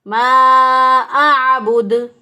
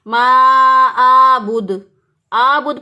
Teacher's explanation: صحیح ادائیگی ہوگی ما اعبد. اور بعض لوگ ہم عین کو حمزہ سے بدلتے ہیں ما آبود, آبود پڑھ دیں گے تو بھی غلط ہو جائے گا.